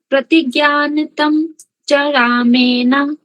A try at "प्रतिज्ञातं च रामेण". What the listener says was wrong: प्रतिज्ञातं च रामेण. ज्ञान इति नास्ति. ज्ञातं. प्रतिज्ञातं च रामेण.